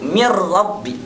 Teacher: tidak menggunakan ghunnah tentunya jadi tidak ditahan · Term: bilagunnah